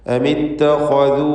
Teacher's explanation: ഇതിലുള്ള ദീർഘം, വാവിൻ്റെ ദീർഘം മദ് മുൻഫസിൽ ജായിസ് എന്നതാണ്. 4-5 ഹറക്കത്തിൻ്റെ അളവിൽ വാവിനെ ദീർഘിപ്പിക്കുക. അമിത്തഖദു എന്നിങ്ങനെ ആ ദീർഘാക്ഷരത്തിന് കൂടുതൽ ദീർഘം കൊടുക്കുക.